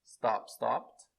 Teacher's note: sem vibração, som de T